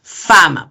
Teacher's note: y este es un fonema labio dental · Y por el modo, recuerden que son fricativas, ¿no? Es una fricativa sorda además.